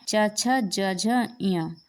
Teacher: तालव्य में च वर्ग के सभी जो हमारे वर्ण होते हैं च छ ज झ य ये हमारे तालव्य में आते हैं